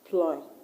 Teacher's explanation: The word employ, is it a verb or a noun? Is a verb. So the stress will go where? To the second syllable, ploy.